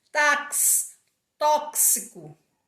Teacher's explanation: E na palavra táxi, o X tem som de KS.